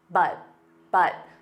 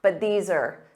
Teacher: for pronunciation but just has that flat T But but so you just don't push out that sound for the T and then you need to connect it with the other words